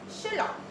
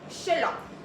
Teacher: For example here, Sherlock is pronounced as Sherlock in general British. No R sound because it is non-rhotic, so it is the way we heard it, it is very short and sharper ending. · general British use the non-rhotic, which means that we are not pronouncing the R sounds